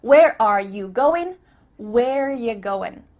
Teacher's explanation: and again we cut out R